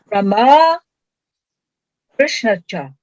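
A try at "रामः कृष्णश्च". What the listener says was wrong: Krishnascha. Because it's the Visarga followed by cha. Just as the Visarga followed by t becomes an s, so the Visarga followed by ch becomes a sh. It's the same point of articulation.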